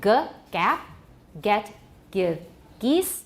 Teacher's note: Velar stops become more front before more front vowels.